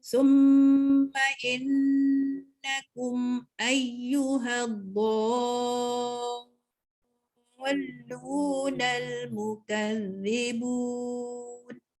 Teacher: Mim bersabdu dan nun bersabdu. Kena baca dengung.